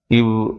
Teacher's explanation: மேல்வாய் பல்லை கீழ் உதடு பொருந்துவதால் பிறக்கிறது. மேல்வாய் பல்லை கீழ் உதடு பொருந்துவதால் இவ் என்பது பிறக்கிறது. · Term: வகரமே